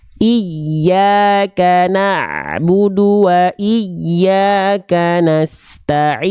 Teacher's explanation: makhraj huruf ya itu di tengah lidah diarahkan ke langit-langit lebih tekan lagi ke atas